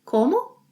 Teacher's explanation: Say it with a rising intonation.